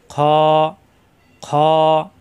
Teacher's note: খ মোটা হরফ, কণ্ঠনালীর শেষাংশ থেকে উচ্চারণ হয়। খ মোটা হবে।